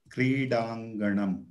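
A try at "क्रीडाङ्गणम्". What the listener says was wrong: Uttamam.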